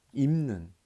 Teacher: 요 니은이라는 비음을 담고 싶어서 비읍이 미음으로 변하는 현상 비음화죠.